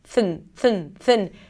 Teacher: you want to bring the tongue out for the TH and then pull it in really quickly for the N